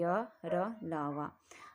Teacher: जिन वर्णों का उच्चारण करते समय जीवा पूरी तरह मुख के किसी भाग को नहीं छूती उन्हें हम अंतसत व्यंजन कहते हैं।